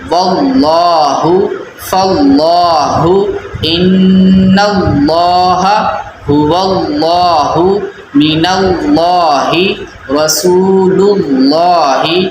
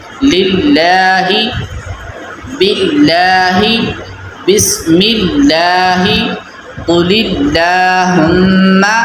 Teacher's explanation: اللہ عز و جل کے لام سے پہلے زیر، اللہ عز و جل کا لام باریک پڑھیں گے